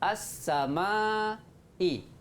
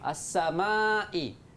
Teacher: Kita langkah lam tu, tak baca lam.